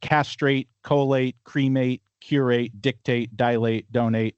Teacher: So, all of those have the the stress on the first syllable for Americans. And these are all two syllable words.